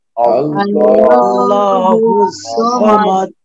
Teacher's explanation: আমাদের এই আল্লাহ শব্দের লাম মোটা করে পড়তে হবে বাংলায় ল এর মতো, ঠিক আছে? তারপরে দেখেন এই যে সদ জবর কি স, দুই ঠোঁটটা হালকা গোল হবে আর আওয়াজটা মোটা হবে স, ঠিক আছে?